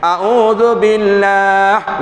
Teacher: Ya wajib nipis kerana lafaz jalalah baris bawah.